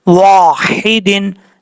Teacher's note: तो यहाँ दो ज़ेर के बाद वाव है, गुन्ना करेंगे। वाव को पढ़ते वक्त होंठ गोल करके पढ़ने हैं